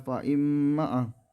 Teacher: ayat yang kelima itu ada faimma gunah gunah musyaddah karena Kara ada huruf mim bertasydid cara membacanya memasukkan dengan mendengung